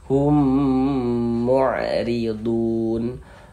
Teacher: Hum di bagian humnya ini suaranya itu kita tahan ya, kita panjangkan sejenak sepanjang 2 harokat, kita gunnahkan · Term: idgham mimi